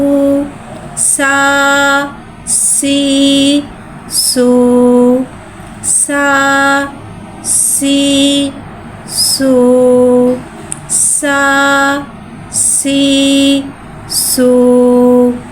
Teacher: सीन में सिटी को ज़ाहिर करके पढ़ेंगे।